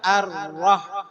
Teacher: jangan sampai kebanyakan getarannya Cukup dua getaran